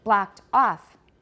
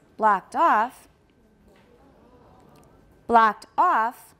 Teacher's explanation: Both are stressed, but we're at the end of an utterance, so off is going to be higher. It sounds like it's got more stress. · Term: tonic stress